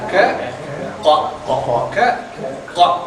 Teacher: அந்த தொண்டையில பிடிக்கிற மாதிரி அழுத்தமான சத்தம் தரும்